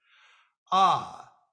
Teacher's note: an open mouth and a relaxed neutral tongue position this is the sound that comes out very naturally when we're not trying to make any other vowel sound in particular